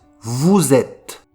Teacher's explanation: On ne prononce pas le E ni le S et on fait la liaison vous êtes. Vous êtes.